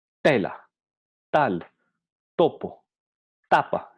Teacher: Entonces nos damos cuenta que pasa primero por la fase en la que los órganos articulatorios se preparan para la pronunciación, luego ocurre la oclusión, la lengua al tocar los dientes impide el flujo del aire, y luego la tercera fase, que es la explosión